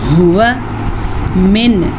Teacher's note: دیکھیں اب نون ساکن کے بعد ہمارے پاس عین ہے جو کہ حروف ہلکی میں سے ہے، تو ہم نون ساکن کو ظاہر کر کے پڑھیں گے اور بغیر غنے کے پڑھیں گے